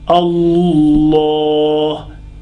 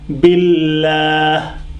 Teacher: So the difference is Allah, using whole mouth, whole tongue. Allah. But because of the kasra, tip of the tongue.